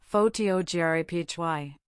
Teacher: The stress moves to the second syllable.